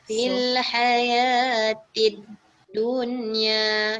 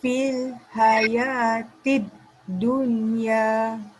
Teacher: oleh kerana selepas huruf lam tu ada sabdu, jadi lam dia tu kita tak dibunyikan lam dia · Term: tak dengar lam